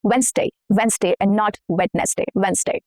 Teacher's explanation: We are shortening the number of syllables here if you notice.